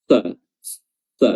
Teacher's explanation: huruf shad makhrajnya adalah ujung lidah bertemu dengan gigi seri bawah bagian dalam